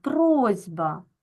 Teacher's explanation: дзвінкий звук Б вимагає від глухого с дзвінкості тобто робить його подібним собі дзвінким